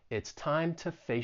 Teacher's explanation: i say the preposition to i'm going to use the schwa and just say it's a very weak sound once again it helps me kind of just run right through